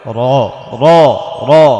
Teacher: রয়ের ওপর যদি জবর হয় তাহলে র র র মোটা করে পড়তে হবে।